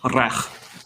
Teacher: the Klingon R is a trill, so it should be rech rather than rech.